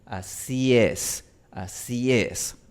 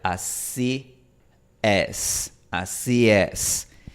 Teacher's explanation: Pero no es exactamente igual a la E española porque la E española se pronuncia con la lengua un poquito más arriba, mientras que la E inglesa se pronuncia con la lengua un poquito más abajo.